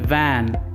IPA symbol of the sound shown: v